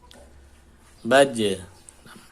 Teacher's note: Kemudian sifat tambahan atau yang tidak berlawanan, dia punya sifat al-qalqalah, yaitu dia memantul ketika disukun.